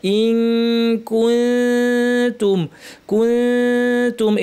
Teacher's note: নুন সাকিন তায়ের মাখরাজে জিহ্বা নিয়ে যাব, উপর পাটের দাঁতির গোড়ায় কাছাকাছি জিহ্বা নিয়ে লাগাবো না, নাক থেকে গুণা করবো। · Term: ইখফা